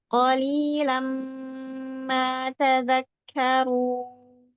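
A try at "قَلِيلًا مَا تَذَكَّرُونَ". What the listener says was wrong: Ya, ahsan barakallahu fiki, fatahullah alaik.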